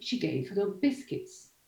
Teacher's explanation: the most neutral one is, again, the last lexical item. So, nucleus on biscuits.